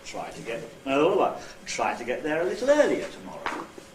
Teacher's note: Earl is the nucleus.